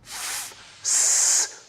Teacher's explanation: when we restrict the flow of air, as in f, s, producing a chaotic, noisy sound